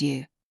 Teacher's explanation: the yod sound that smooth glide at the start of the word u